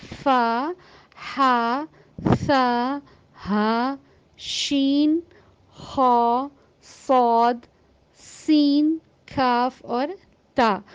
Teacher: تو ہمس کے جو معنی ہیں وہ یہ ہیں سرگوشی، خاموشی اور حروف کی ادائیگی میں کچھ کمزوری۔ اس کو ادا کرتے ہوئے سانس جاری رہتی ہے اور ہوا خارج ہوتی ہے۔